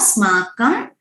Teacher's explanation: उसका अनुस्वर sound will not change, it will be म only